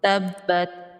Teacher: تا پر کوشش کرنی ہے کہ قلقلہ نہ ہو